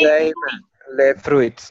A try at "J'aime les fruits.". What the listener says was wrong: There's no S. There's no S. I'm hearing a S. I meant to say fruit. The fruit word does not have an ending note of S.